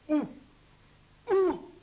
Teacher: voyelle OU, la langue se soulève dans le fond de la bouche, les lèvres s'allongent le plus possible.